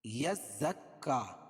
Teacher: तशदीद है ज़ाय पर और काफ पर भी, दोनों पर सख्ती होगी